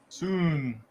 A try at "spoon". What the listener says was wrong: it's not a silent p